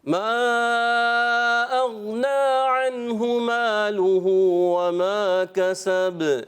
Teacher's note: غین کی ادائیگی، غین جو ہے یہ پر کرنا ہے، اغنا، کلکلا بھی نہیں ہونا چاہیے، آواز لوٹے نہیں۔